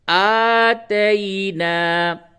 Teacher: کھڑا زبر برابر ہوتا ہے الف مدہ کے، اس کو تھوڑا سا کھینچ کر کے پڑھیں گے